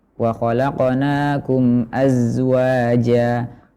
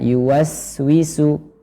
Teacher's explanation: Jadi yang mengalir adalah suara, akan tetapi nafas sedikit yang mengalir, tidak sebanyak sin.